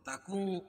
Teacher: اخفاء حقیقی کیونکہ نون ساکن کے بعد حروف اخفاء کے 15 حرفوں میں سے کاف ہے